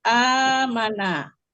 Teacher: Alif yang kedua itu alif akar kata berharokat sukun ya. Nah, melebur dia dua alif pola dengan alif akar kata menjadi fathah panjang amana